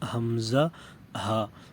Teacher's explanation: اقصی حلق، یعنی گلے کا نچلا حصہ، سب سے نیچے والا حصہ جو سینے کے ساتھ ہوتا ہے